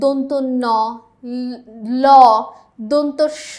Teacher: কোন ব্যঞ্জন ধ্বনির উচ্চারণের সময় জিভের ডগা উপরের পাটির দাঁতের গোড়ার সঙ্গে লেগে বায়ুপথে বাধা দেয় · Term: দন্তমূলীয় ব্যঞ্জন